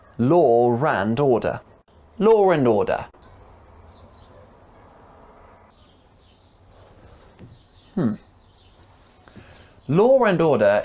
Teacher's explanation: In fluent speech, if a word ends in an or sound, like law, and the next word begins in an you'll often hear a r sound linking them together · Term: intrusion